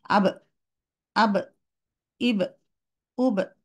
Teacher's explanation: Touch করার পরে sound continue করা যাবে না, কাটিং সাউন্ড দিয়ে দিতে হবে।